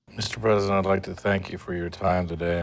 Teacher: do you hear how the music or intonation Falls after the final stressed word